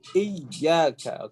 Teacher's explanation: di sini ya-nya harus ke wastul lisan bukan ke al-jauf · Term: naber